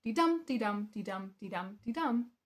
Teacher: There are five syllables and five syllables equaling 10. Five that are stressed, five that are unstressed within a de dum de dum de dum de dum de dum pattern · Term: iambic pentameter